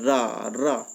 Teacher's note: कंपित, कंपन हो, जब रा बोलेंगे रा रा, तो जीभ में हमारी कंपन होती है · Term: कंपित वर्ण